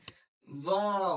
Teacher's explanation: जबान के नोक को ऊपर वाले दांतों के किनारों से लगाकर वॉ अदा करिए